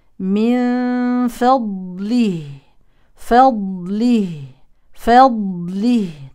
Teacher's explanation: من فضله نون ساكنه يليها فاء يعني اخفاء حقيقي من فا اما الضاد من حروف التفخيم اتت ساكنه نبين فيها الصفات الاستعلاء الاطباق الرخاوه الاستطاله